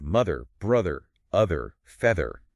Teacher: for all of these, you need that vocal cord vibration happening, that buzz. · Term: voice th